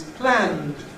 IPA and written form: plænd (planned)